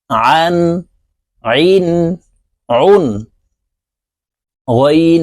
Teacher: আইন হরফ হলকের মধ্যখান থেকে চাপ দিয়ে উচ্চারণ করতে হবে কারণ আইনের মাখরাজ হলকের মধ্যখান থেকে হবে আন আইন উন দুই